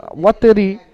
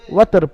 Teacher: আর রয়ের নিচে জের, ওয়াতরি, ওয়াশ-শাফিঈ ওয়াল ওয়াতরি, ওয়াতরি থেকে আপনি এখানে ওয়াতর পড়বেন, কারণ এখানে রকে সাকিন করবেন কেন, কারণ আয়াতের শেষে থামছেন, জেরকে সাকিন করে পড়তে হবে।